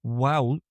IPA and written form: wæʊlk (WALK)